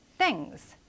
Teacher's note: TH는 여기에서는 무성음으로 발음된다.